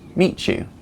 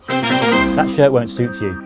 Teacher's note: next begins with a yeah sound like you or yours then the two sounds come together and change to ch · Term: assimilation